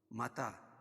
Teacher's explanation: کڑا زبر قائم مقام الف مدہ کیا اور اس کو ایک الف کے برابر کھینچ کے پڑھیں گے